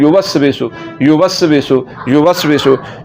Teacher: या के ऊपर जो पेश है इसको लंबा नहीं करना